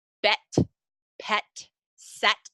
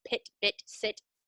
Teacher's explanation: The short I becomes an E, so bet, pet, set instead of pit, bit, sit, bet, pet, set.